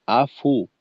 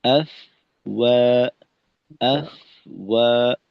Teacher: ফায়ের উচ্চারণ শেষ হওয়ার পূর্বেই ঠোঁট গোল করে দেওয়া, পরবর্তী ওয়াওয়ের প্রস্তুতি স্বরূপ। তো ফাটাকে সুন্দর মতো তার নিজের সময়ে আদায় করা, ফায়ের উচ্চারণ শেষে গিয়ে ওয়াওয়ের কার্যক্রম শুরু হবে, অর্থাৎ আফ ওয়া, আফ ওয়া, যেন আফু ওয়া এমনটা না হয়, আফওয়াজা।